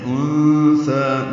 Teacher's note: انثى، نون ساکن کے بعد تھا آنے کی وجہ سے اخفا ہے، نون ساکن کے بعد چھپائیں گے، تھا کو نرمی سے پڑھیں گے، 2 حرکات لمبا کریں گے.